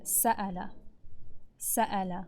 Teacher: Show the Hamza. Make sure your vocal cords come together completely.